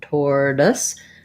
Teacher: I would build from there, or, then add your T, or tor. This T sounds more like a D. It's a flap T. It's light, tortoise. The OI is confusing because usually that spelling would say something like oi, but in the word tortoise, it's just a schwa sound, so it sounds like And then the SE on this word says the S sound.